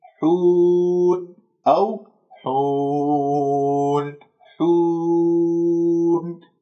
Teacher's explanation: تضم الشفاه إلى الأمام، تجعل رأس اللسان في المنطقة اللحمية أسفل الثنايا السفلى وترفع أقصى اللسان، ما راح يطلع عندك غنة · لا تجعلوا غنة في هذه الواو بقفل فتحتي الأنف.